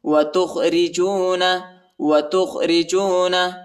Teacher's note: را کو باریک پڑھیں گے، را پر زیر آیا ہے